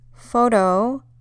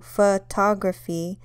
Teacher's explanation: first o sounds like an O whereas in the second example the first o photography has kind of changed its sound since it's unstressed